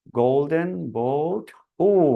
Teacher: দুটো ভাওয়ালের কম্বিনেশন এখানে, একটা হলো অ এবং উ, ও। আপনারা এখানে অ্যারো চিহ্ন দেখতে পাচ্ছেন, অ থেকে শুরু হয়ে উ এর দিকে এটা মুভ করছে।